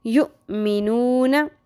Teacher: یؤمنون میں حمزہ ساکن آ گیا، یہاں پہ جھٹکا آپ نے اس کا دھیان رکھنا ہے کہ جھٹکا لگے گا